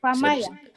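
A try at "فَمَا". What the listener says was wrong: betul.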